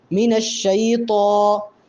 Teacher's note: من الشیطان میں طاء کے اوپر کھڑا زبر ہے، اس کو بھی ایک الف کے برابر لمبا کریں گے، اور اگر ہم اس کو پڑھیں من الشیطان تو غلط ہو جائے گا، طاء کو موٹا پڑھیں گے